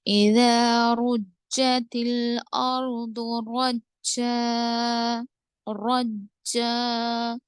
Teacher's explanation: را پہ زبر ہے، را کو موٹا پڑھیں گے